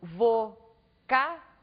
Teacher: Na palavra vocábulo, nós temos aqui a última sílaba, a penúltima sílaba, a antepenúltima sílaba. Ao pronunciarmos a palavra vocábulo, nós acentuamos a antepenúltima sílaba. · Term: proparoxítonas